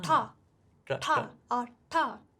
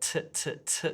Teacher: in English, we don't curl the tongue, we just want it tapping the top of the roof of the mouth · And this is because for many Indian languages, we have a similar sound to the English t and d, but we call it a retroflex sound, which means that the top of the tongue is curled back over like ta, ta, or ta, like that.